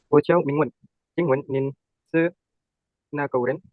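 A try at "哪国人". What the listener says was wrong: Nah, nada masih bisa dipoles lagi. Nah, cuma langsung mau perbaiki sedikit, bukan nako, tapi nakuo. Ingat ini bacanya ada ke ketemu wo. Jadi nakuo, nakuo, nakuo, wo tambah ke, jadinya kuo.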